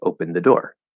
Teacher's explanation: the d the actual real d that's supposed to be there in the past tense it can just disappear